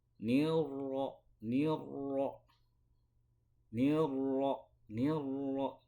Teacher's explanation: Nah, supaya pengulangannya itu tidak kuat, maka sifatnya itu harus dilemahkan. Cara melemahkannya harus membalikan lidah kita ke punggung lidah ketika membaca huruf ro. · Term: at-takrir